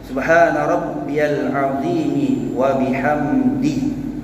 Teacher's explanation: Sebab kadang-kadang ada kalanya kita dengar bacaannya jadi subah, sedangkan ba itu mati yang membawa hukum qalqalah.